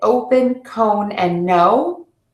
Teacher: The fourth subset that I see are movement vowel mistakes, and that's the long O, I, and A. These are made with an open mouth, and the mouth shape moves.